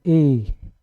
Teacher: ए जो होगा आपका कंठ तालव्य से होगा, ठीक है, गला और तालु